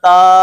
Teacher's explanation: تا نمبر 1 تو باریک ادا ہوتا ہے اور نمبر 2 نرمی کے ساتھ ادا ہوتا ہے